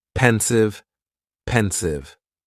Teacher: And the pronunciation is very easy. Just two syllables and the stress is on that first syllable.